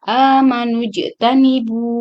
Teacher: Kemudian amanujtanib, di sini ada jim yang disukunkan, maka hukum membacanya diqalqalkan. Amanujtanibu.